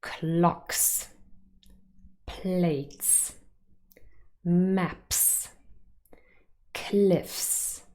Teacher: the spelling s is pronounced s with an unvoiced fricative